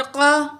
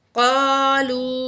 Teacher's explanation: वइज़ा लकुल्लज़ीना आमनू, काफ ज़बर क़ा, काफ को मोटा करके पढ़ेंगे